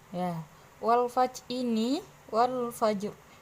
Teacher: alif lamnya ini dibaca al-qamariyah karena alnya bertemu dengan huruf fa, maka harus dibaca jelas yaitu wal fajr. Jadi alnya kelihatan.